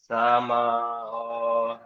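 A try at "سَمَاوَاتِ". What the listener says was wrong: আরেকটু বেশি করে টান দেবেন, সামা ও। তাজের তি, তি টান হবে না, জের হারাকাত টান হয় না। সামা টান দেন, মিম খাড়া যাবা টান দিয়ে পড়তে হবে। সামাওয়াতি। খাড়া জাবার এসেছে।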